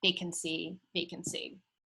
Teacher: And then here's an example of something called a triple rhyme, where you see the stressed syllable is not the last or the second to last, but the third to last